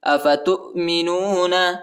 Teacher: تا کو حمزہ کے ساتھ ملائیں گے